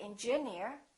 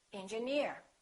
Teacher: if the word ends with e e r we stress the suffix